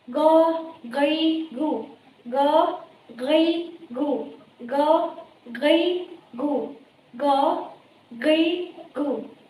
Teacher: apabila ia diucapkan, maka makrotnya itu terletak pada tenggorokan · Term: huruf goin